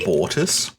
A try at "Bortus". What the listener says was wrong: Bortus. Well, that was how I always wanted to spell it, but apparently it has a U. It's Bortus. Yeah, Bortus.